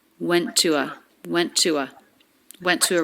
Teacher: we have two t's here they're connected with just a single true t sound so you don't need to make two t's here we link